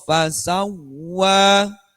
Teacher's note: kalau ada wawu tasdid, wawu tasdid, hati-hati berarti tidak gunnah. Kalau sebelumnya tidak ada tanwin atau nun mati, contoh di ayat kedua.